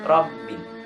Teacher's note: Pengucapan ba di lafaz rabbi itu biasanya terbawa ke huruf mim.